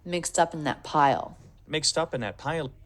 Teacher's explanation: In that, he doesn't reduce the vowel, but it sounds like he almost drops the TH in that pile.